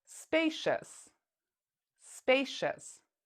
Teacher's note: We pronounce cious as shus.